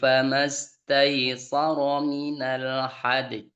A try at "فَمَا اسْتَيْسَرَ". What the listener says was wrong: Ya, sa-nya tipiskan. Famastaysara. Sa. Jangan so.